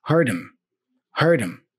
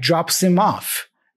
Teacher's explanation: He drops the H, and he just pronounces M, like drops him off.